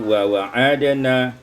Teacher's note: hazful alif, dibuang alif menjadi wa wa'adana